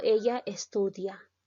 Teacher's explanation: en una afirmación, la parte final de la oración va a llegar a descender. Si yo digo, ella estudia, está descendiendo. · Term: entonación final